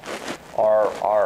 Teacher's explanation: For the R, it's not touching, it's just approaching the top of the mouth and it's creating a little friction. Right? The air is kind of just flowing around the tongue and your tongue tip moves some.